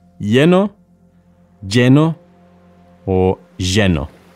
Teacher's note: Two L's in Spanish are pronounced as a Y sound, ya, yeah, or a sh sound, or even a j sound. They are all perfectly acceptable ways of pronouncing the double L.